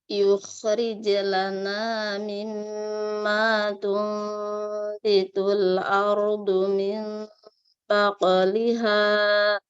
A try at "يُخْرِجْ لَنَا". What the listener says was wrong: Oke, satu koreksi, tebalkan kho sukun karena diawali dhammah. Nah, nggak putus kalau kalah yukhrij putus.